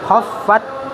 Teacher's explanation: ujung lidah bertemu dengan pangkal gigi seri atas, bukan ujung gigi seri atas. Khofat wanya panjang 2 harokat, mat tabi'i.